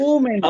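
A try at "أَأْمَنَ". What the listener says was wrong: امانا تھا، اومنا نہیں تھا، امانا تھا. حمزہ پر فتح ہے. پہلے حمزہ پر فتح ہے، دوسرے حمزہ پر کیا ہے؟ ساکن. دوسرا حمزہ ساکن.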